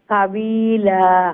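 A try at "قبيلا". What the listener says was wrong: কাবিলা কাফ তো মোটা করে উচ্চারণ করা না নে কাবিলা জি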